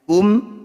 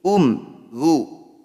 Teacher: bunyi mim sukunnya dibaca jelas tidak usah dengung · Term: bacaan zhar syafawi